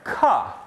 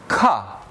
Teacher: the first of which is the sound Cup voiceless non-nasal Cup the back of the tongue makes a closure at the velum and the transcription symbol is a lowercase K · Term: velar stops